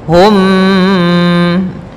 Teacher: masukkan mimnya kepada mim setelahnya dan ditahan. Hum, tahan gunnahnya. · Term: idgham mimi